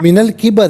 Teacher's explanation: را کے نیچے زیر ہے تو را کو باریک کر کے پڑھیں گے